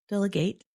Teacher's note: the verb form, delegate, has what we call secondary stress on the last syllable. It's not quite as strong as the first syllable, but it is enough to make the vowel sound change.